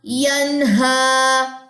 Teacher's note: غنہ نہیں کرنا اظہار کرنا ہے کیونکہ حروف حلقی آ رہا ہے